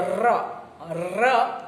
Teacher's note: જ્યારે હવા બહાર નીકળે ત્યારે જીભ ધ્રુજે તો ર ર એ પ્રકંપી વ્યંજન છે તમે ર ધ્રુજાવ્યા વગર